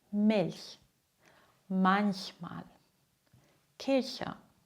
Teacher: Es gibt noch eine zweite Regel, auch nach den Buchstaben L, N und R. Spricht man CH weich aus